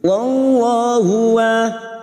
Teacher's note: lam jalalah yang sebelumnya fathah kita baca tafkim